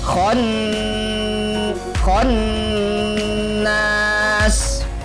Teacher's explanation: khannas huruf nun ditahan selama tiga harakat